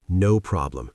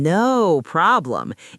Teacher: the receptionist puts emphasis on no by lengthening the word